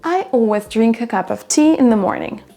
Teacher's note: Donc le a, le of, on les entend à peine, et in the, on va l'entendre à peine également.